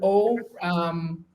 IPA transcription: o